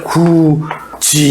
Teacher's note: 그래서 디귿하고 이가 만나서 우리는 디귿하고 이가 만나면 지읒으로 발음한다. 디귿하고 이를 지읒으로 발음하니까 구지 이렇게 발음하자.